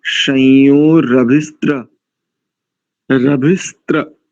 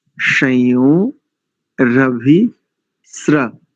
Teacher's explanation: दंत्य सकार में रेफ है तो हो जाएगा स्र